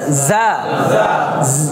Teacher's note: জাটা একটু জিম এবং জালের মাঝামাঝি, জিমটা শক্ত জালটা নরম, জিমটা শক্ত জালটা নরম, আর যা হচ্ছে মাঝামাঝি যা যা। জিহ্বার আগা থেকে নিচের দাঁতের সাথে লাগাবেন যা। ঝিঝি পোকা আছে না, ঝিঝি পোকা যেরকম আওয়াজ করে এরকম একটা আওয়াজ হবে যা যা।